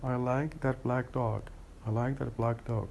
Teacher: So we change the K into G just to make the two sounds go smoothly together. So this is what we have for assimilation of voicing. · We change the voiceless into, or to make it voiced. So black is the K sound is voiceless, and then we change it into G, which is the voice counterpart of the sound K. So I like that black dog, instead of saying black dog, because that would make it difficult to pronounce.